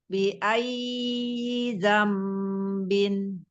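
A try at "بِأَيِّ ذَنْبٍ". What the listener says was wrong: Ya, y-nya jangan panjang Umi. Bukan bi ay, tapi bi ay zambin.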